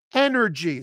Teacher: That final Y is a high E.